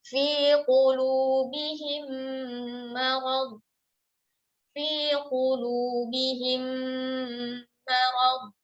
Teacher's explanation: Nah, ini ya, dipisahkan sendiri pembahasannya idgham mimi, yaitu memasukkan bunyi mim sukun ke dalam huruf mim di depannya. Contoh, fi qulubihim marad, fi qulubihim marad, ya, itu diidghamkan, idgham bi gunnah mutawwalah ya, di gunnahnya dipanjangkan.